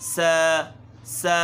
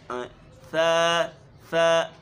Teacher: اصل مخرج اس کا یہ ہے کہ زبان کی نوک دانتوں کے کنارے پہ لگے، اندرونی کنارے پہ